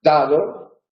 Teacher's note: La D, en posición inicial, es oclusiva. · En lugar de ser oclusivo, pasa a ser aproximante, fricativo.